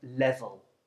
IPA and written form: ˈlevəl (level)